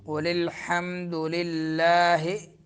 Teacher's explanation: حمد حا درمیان حلق سے